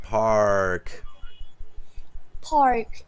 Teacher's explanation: I want you to draw that R out. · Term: that kind of English R